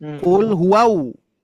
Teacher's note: Kalau kita misalkan membaca qul huwau, berarti kita menambah wawu sukun.